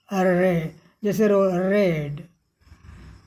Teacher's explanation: इसके बोलने में हमारी जीभ जैसे लुढ़कती है। इसे बोलते समय जीभ की नोक मसूड़े यानी अल्वियोलर रिज के पास जाकर हवा के दबाव से तेजी से कंपन करती है। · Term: ट्रिल्ड आर